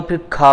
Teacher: अल्प प्राण है और खा ज्यादा हवा टकराने के कारण महाप्राण की कैटेगरी में आता है